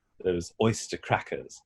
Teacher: Oyster, dropping the R. Crackers, dropping the R.